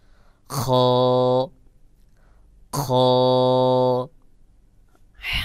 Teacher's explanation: খ বলার সময় উচ্চারণের আওয়াজটা গোল মতো করে উচ্চারণ হবে, মুখ গোল হবে না, তবে আওয়াজটা গোল মতো করে হবে, যেমন খ খ।